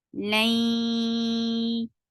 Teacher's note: Keep the sound in your nose for a longer time because this is akmal gunna. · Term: idgham with gunna